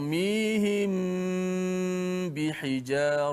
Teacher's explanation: apabila mim mati bertemu dengan satu huruf saja Hurufnya huruf ba maka kita baca dengan secara dengungkan huruf tersebut dan pernah menit pastikan Bibeh kita sentuh bersentuhan jangan terlalu rapat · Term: Ikhfa Syafawi